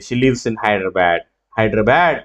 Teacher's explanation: షీ లివ్స్ ఇన్ హైదరాబాద్ అని పైకి రాదు, హైదరాబాద్ అంటే కిందకి ఫాలో అవుతుంది. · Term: ఫాలింగ్ ఇంటోనేషన్